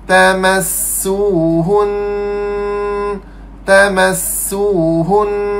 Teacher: Dengung bagi cukup dua harakat.